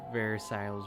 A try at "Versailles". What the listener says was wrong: Versailles. You don't pronounce the last S.